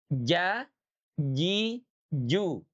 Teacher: Jangan becek ya huruf jim itu ya. Jimnya teman-teman itu tidak punya sifat hamas. Jadi tidak ada nafas yang mengalir